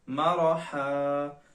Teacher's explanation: مرحن پر بھی غنہ نہیں کریں گے اس وجہ سے کہ اس کے آگے والا حرف جو ہے وہ حروف ہلکی ہے